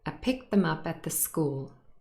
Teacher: At and the, again here's elision, and we join them together, so the final t in at is dropped and it becomes at the.